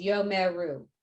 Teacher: the schwa basically breaks the syllable so this would be three syllables